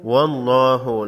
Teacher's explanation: واللہ لفظ اللہ کے لام کو موٹا پڑھیں گے